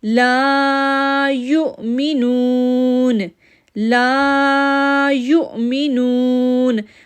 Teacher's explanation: اب لا کو 2 سیکنڈ کے لیے کھینچیں گے کیونکہ الف سے پہلے زبر ہے. جب الف سے پہلے زبر ہو تو لا کو 2 سیکنڈ کے لیے کھینچتے ہیں.